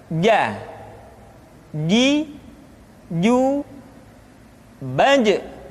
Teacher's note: Dikeluarkan dengan menyentuhkan tengah-tengah lidah dengan langit-langit. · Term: huruf ja